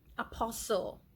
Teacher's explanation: The T becomes silent. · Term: silent T